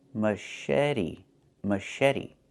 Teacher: The ch makes a soft sh sound like in fish.